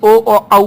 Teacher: ओठ और कंठ दोनों की सहायता से ओ ओ औ बोला जाता है